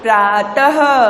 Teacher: जब विसर्ग लगता है तो आखिरी में ह की आवाज आती है